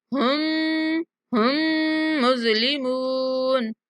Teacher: یہاں ہا کو ڈائریکٹ مشدد میم سے ملائیں گے